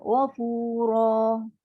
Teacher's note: Bila berhenti biarlah betul-betul ra 2 harakat. Jangan ghafura. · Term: mat asli